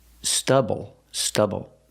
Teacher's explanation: pronation use the short uh like cup and up stubble stubble put the stress on the first syllable